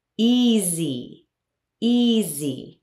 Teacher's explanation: Notice the S is pronounced as Z